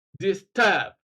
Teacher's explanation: The prefix is dis, D-I-S, so it's not stressed. Stress then falls on the second syllable, turb, disturb.